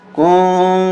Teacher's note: यहाँ इख्फा होगा, काफ नून पेश कुं, नाक में आवाज जाएगी